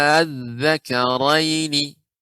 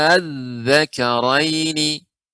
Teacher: Nah, ini dibaca dengan 2 cara, yaitu dibaca dengan 6 harokat mad lazim, jadi harus panjang dahulu.